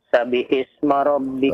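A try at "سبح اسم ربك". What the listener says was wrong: Perhatikan ya. Perhatikan tasydidnya ya. Coba perhatikan lagi tasydidnya. Sabbihis.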